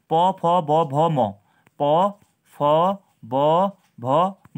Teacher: ओष्ठ वर्ण होते हैं, क्योंकि इसके उच्चारण में हमारा होंठों का प्रयोग किया जाता है